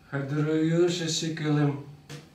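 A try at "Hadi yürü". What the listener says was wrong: Ты перепутал? Знаешь, что ты неправильно говоришь? Ты должен сказать Хады Юру. Юру. А ты говоришь наоборот.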